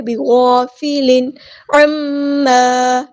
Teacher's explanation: میم پہ غنہ زمانی ہو رہا ہے، الف کے برابر رکیں گے · بیگا نہیں پڑھنا، بیغا، بِغَافِلٍ، تنوین کی آواز کو ہم ظاہر کریں گے، یہاں پہ اظہار حقیقی ہو رہا ہے